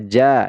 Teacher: madwad ini ini adalah Mad iwad iwad panjangnya adalah dua harakat ini tidak dibaca Jan tetapi dibaca ja dan dipanjangkan dua harakat